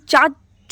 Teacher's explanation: चा अघोष में आएगा अल्पप्राण में आएगा और तालव्य में आएगा